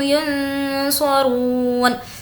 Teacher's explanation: رو کو کھینچیں گے کیونکہ واو مدہ ہے